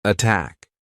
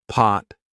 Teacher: Aspirated. Attack. Not aspirated. Pot.